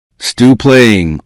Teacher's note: The final P and stop and the first P in playing may merge.